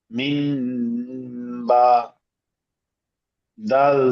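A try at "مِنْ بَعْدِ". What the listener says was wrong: মিন হবে না, মিম, মিম বাদি।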